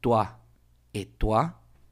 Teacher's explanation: el diptongo o I en francés tiene otro estilo de pronunciación y este es waa